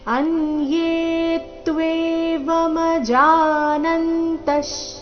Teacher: ಯೇ ಮೇಲೆ ಕೂಡ ದೀರ್ಘ ಹೇಳಿ ನಂತರ ಆಘಾತ ಬರಬೇಕು